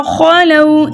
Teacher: واو ساکن اس سے پہلے کسی بھی حرف کے اوپر زبر ہو ایسا واو واو لین کہلاتا ہے. واو لین کو 1.5 حرکت کی دیر لگا کے نرمی اور سہولت کے ساتھ پڑھتے ہیں